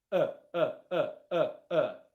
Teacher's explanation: It's not e, it's not ah, it's not aw. My mouth is very, very relaxed and it's not doing anything. It's just making noise.